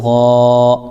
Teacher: غین الف زبر غا یہ الف مدہ ہو جائے گا. الف سے پہلے غین کے اوپر زبر ہے اس لیے الف مدہ ہو جائے گا اس کو ایک الف کھینچیں گے